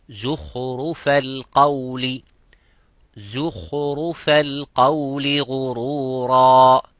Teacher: The kha is mufakham, ra is mufakham, but the zay is muraqqaq.